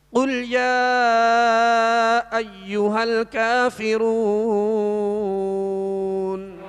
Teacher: یہ قل جو ہے موٹے قاف کے ساتھ ہے، یعنی دو نقطے والا قاف، جیسا کہ ہم نے مشق میں مدنی قاعدے میں پڑھا کہ قاف کو پر یعنی موٹا پڑھیں گے کیونکہ حروف مستعلیہ میں سے ہے